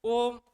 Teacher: ओम को बोलिए खींच के ओम। इसमें कितना समय लग रहा है? तीन गुना समय लग रहा है।